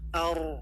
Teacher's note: ro ketika fathah dibaca tebal · tapi Ri ini nanti ada hukumnya tersendiri ketika sukun juga bagaimana sukun sebelumnya adalah harakat fathah Ar tebal · Sukun sebelumnya adalah harokat fathah, ar, tebal.